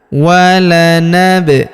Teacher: Huruf ba berharokat sukun kita pantulkan atau kita qalqalahkan.